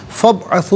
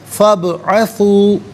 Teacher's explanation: با ساکن تو ہے لیکن حرف قلقلہ ہے، تو یہاں آواز لوٹتی بھی محسوس ہوگی، یعنی قلقلہ کیا جائے گا۔